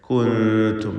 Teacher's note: സാക്കിനത്തായ നൂനും താവുമാണ്. ഇഖ്ഫാ ഹഖീഖി നൽകി മറച്ച് മണിക്കണം.